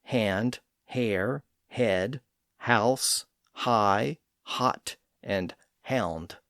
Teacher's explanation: The letter H represents a very soft and lightly pronounced H sound. It's little more than a slight breath or aspiration before another sound.